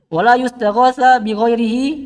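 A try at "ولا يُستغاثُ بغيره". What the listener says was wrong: Di dhamma. Di dhamma. Di dhamma.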